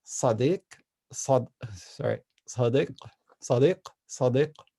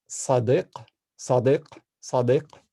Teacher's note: basically the back of your tongue is right where the ah sound should be while you're doing the S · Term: pharyngalized S